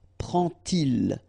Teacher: you won't pronounce it like d to make the liaison, but you will pronounce it like t